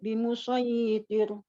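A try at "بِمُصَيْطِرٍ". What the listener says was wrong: Soi, ini ya sukunnya tidak boleh dipanjangkan. Bimusayyitir. Bimusoi. Musoi ini namanya sifat lin, tidak boleh jadi bimusoi. Nah, ini i-nya panjang daripada sotnya. Maka dia dipendekkan. Bimusayyitir. Nah, ro-nya tipis ya.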